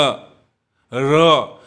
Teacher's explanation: र जब हम बोलते हैं तो हल्का सा तालु में जीभ सटता है, नहीं के बराबर। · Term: अंतस्थ व्यंजन